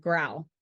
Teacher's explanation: similar to K but with simultaneous vocal chord vibration · Consonant G is a voiced velar plosive, similar to K, but with simultaneous vocal cord vibration. The G makes the G sound like in the beginning of the word growl.